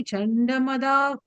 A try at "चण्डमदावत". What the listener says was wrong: And the first line, last letter, Davata, the regular ta. No, you're saying Madavat. You're saying it's Madavata. Chandamadavata.